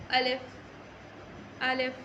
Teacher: अलिफ हमेशा मुंह के खाली हिस्से से अदा होता है। अलिफ को ना तो खींचते हैं, ना ही अलिफ को कोई झटका देना है।